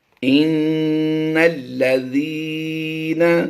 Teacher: ذال کی آواز باریک ہوتی ہے، زا کی آواز نہیں یہاں پر دیں گے